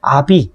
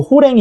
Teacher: 후설모음이었던 게 전설모음으로 바뀐다고 해서 전설모음화, 전설모음이 됐다 해서 전설모음화라고도 얘기를 하는 거예요.